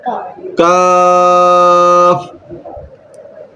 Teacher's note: کاف کا مخرج کیا ہے؟ زبان کی جڑ اور تالو کے سخت حصے سے ادا ہوتا ہے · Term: حروف لاہویہ